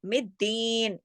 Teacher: दाल के ऊपर तशदीद होने की वजह से सख्ती से जोड़ के पूरा हक अदा किया जाएगा। यौमिद्दीन, और फिर दीन के अंदर या मद्दा है, इसको पूरा हक अदा होगा।